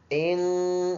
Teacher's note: ناک میں آواز لے کے جائیں گے ایک الف کے اندازے سے